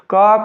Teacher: क के उच्चारण के लिए कंठ की आवश्यकता पड़ती है।